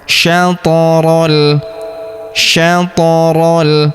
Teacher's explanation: huruf th berharakat sukun kita pantulkan atau kita qalqalahkan · huruf ro langsung lompat masuk ke huruf lam yang berharakat sukun. Langsung masuk ke sini. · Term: Alif lam qamar